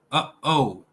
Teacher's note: Glottal stop, uh-oh, in between the H and O